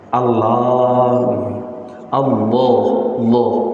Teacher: lamnya lam tafkhim, lamnya lam tebal